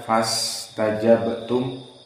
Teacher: maka di sini sinnya dari huruf yang mendesis maka fas agak panjang